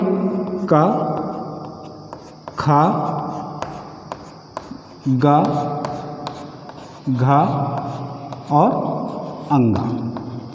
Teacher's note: ये हमारे वर्ण कंठ से उच्चारित होने के कारण इनका नाम कंठ वर्ण पड़ा है